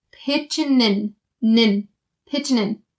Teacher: Bring that n sound over to the in